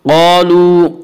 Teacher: क़ाफ को पुर पढ़ेंगे, क़ाफ हुरूफ मुस्तालिया में से है। हुरूफ मुस्तालिया 7 हैं जिनका मजमुआ खुस्सा ज़ग़्त क़िज़ है, जो हमेशा हर हाल में पुर पढ़े जाते हैं।